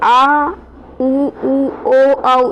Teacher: पश्च, ये देखें, पश्च में आ, ऊ ऊ ओ औ, इसमें क्या है, जीभ का पीछे का भाग क्रिया कर रहा है, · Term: पश्च स्वर